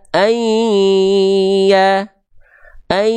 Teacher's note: yang dileburkan adalah bunyi konsonan n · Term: idgam bunah